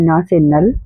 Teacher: दांत को छू के निकलने वाली ध्वनि है न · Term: दंत्य